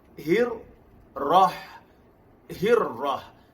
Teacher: huruf ra ialah takrir, bergetar pada satu getaran.